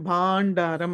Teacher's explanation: అనుస్వరం తర్వాత డ ఉంది కాబట్టి డ అంటే ట వర్గంలో ఉంది కాబట్టి ట ట డ డ ణ వస్తుంది